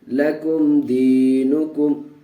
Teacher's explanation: لکم دینکم، لام زبر لا، کاف میم پیش کم، لکم. دیکھیے یہاں میم کو ظاہر کر کے پڑھیں گے اس لیے کہ میم ساکن کے بعد دال آیا ہوا، اظہار شفوی کا قاعدہ.